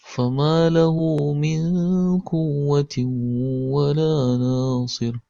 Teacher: Nah, ini pada min quwwati, pada kata milku itu ada huruf nun sukun bertemu dengan huruf qaf. Nah, huruf qaf adalah huruf ikhfa, maka hukumnya adalah ikhfa. Dibaca samar dan dipanjangkan sepanjang 2 harakat.